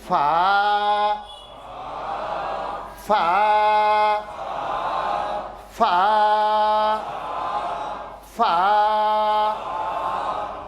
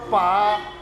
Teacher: ரெண்டு உதடையும் ஒட்டி வாயை திறந்தோம்னா பா அப்படிங்கிற எழுத்து வரும்